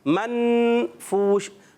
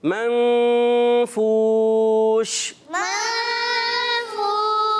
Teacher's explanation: یہاں اخفا غنہ کریں گے. اخفا کی معنی ہوتا ہے نون کو چھپانا.